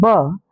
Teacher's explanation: ब आपका ओष्ठय होता है